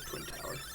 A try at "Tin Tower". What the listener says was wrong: Tin Tower. No, Tower. You said Twin.